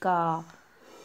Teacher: जैसे का, तो कंठ से निकलता है।